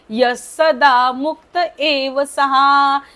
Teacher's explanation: यच्या नंतरचा जो विसर्ग आहे तो बोलायचा नाहीये त्याचा उच्चार स होणार आहे य सदा मुक्त एव शेवटचा जो विसर्ग आहे तो पूर्ण बोलायचा